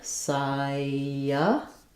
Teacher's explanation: it won't be in the dictionary, but there will be a little ya sound there. · We have first syllable stress, and letter C says the S sound in this word.